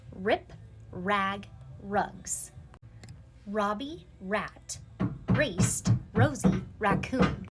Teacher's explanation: Notice how when I'm saying the sound, my lips are going out a little bit. And I'm pulling my tongue back in my mouth.